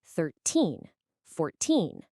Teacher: Okay, listen closely. For the teens, the stress is always on the end. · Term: word stress